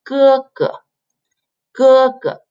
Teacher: It's a flat tone, so you go g, g, g, g. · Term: first tone